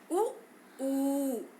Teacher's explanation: उ का उच्चारण करते समय हमारे ओठ जो है दोनों आपस में मिल जाते हैं और गोल हो जाते हैं, तो इसलिए इसे ओष्ठव्य ध्वनि कहते हैं।